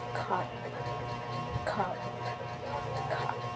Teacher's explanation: The third one is open neutral, tongue low and central relaxed, short sound.